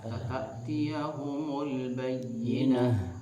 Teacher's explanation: Sifat khafa daripada huruf H itu harus dikuatkan dengan cara mempersempit makhraj dan mempertahankan sifat huruf khawah dan hamzah H itu.